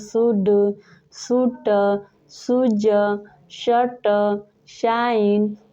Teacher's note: सारे वर्ड्स में देख सकते हैं एस एच का उच्चारण तालव्य श से हुआ है